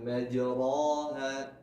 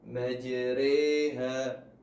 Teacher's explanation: Di dalam Al-Quran terdapat beberapa bacaan gharib yang perlu diperhatikan. Pertama, imalah, yaitu membacanya dengan memiringkan bunyi harokat fathah ke arah kasrah